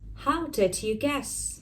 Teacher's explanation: I'm using the glottal stop when I'm just rushing, I'm fast on my pace